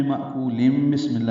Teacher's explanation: تنوین کے بعد با آنے کی وجہ سے اقلاب کرنا ہوگا